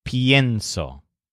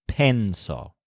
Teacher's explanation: Spanish speakers don't like stressing e all by itself in a verb, like penso. They prefer the sound of a stressed ie, like pienso.